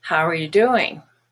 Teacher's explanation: you when it's not stressed is ya